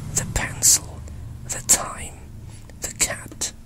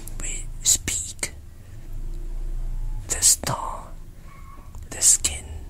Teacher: P, T, K in stressed syllables are actually followed with a breath, which is heard like H.